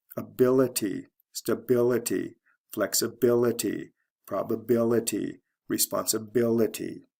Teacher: l e to i l do you notice a pattern here the syllable right before the ity ending is stressed